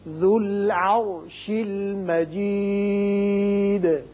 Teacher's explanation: یہ واو زائدہ ہے، یہ نہیں پڑھیں گے. ذال کی پیش لام سے ملے گی.